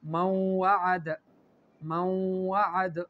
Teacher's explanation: نون جو ہے یہ مدغم ہو گیا واو میں، اور اس میں غنہ بھی ہے